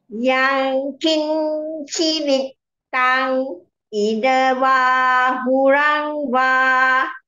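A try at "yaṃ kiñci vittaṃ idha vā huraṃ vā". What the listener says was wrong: Okay, good.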